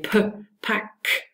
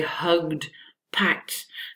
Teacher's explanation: It's actually when two plosives follow each other and they use different articulators. The plosives then overlap, and the plosive is not released, the first one, because you switch to the next sound, and so the next one is sort of a stronger plosive. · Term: incomplete plosion